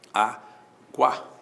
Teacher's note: o U é semivogal, o A é vogal, o ditongo é crescente.